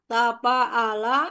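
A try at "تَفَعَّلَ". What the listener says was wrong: Tafa'ala ada tasdidnya kan? Tafa'ala.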